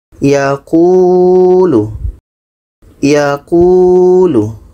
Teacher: Ku ini dibaca panjang karena ada waw mati sebelumnya baris depan. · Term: mad asli waw